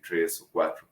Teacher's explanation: la r más fricativa verdad para decir tres o cuatro